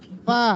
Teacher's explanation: Huruf fa gigi atas perut bibir bawah ditempelkan gigi dengan bibirnya.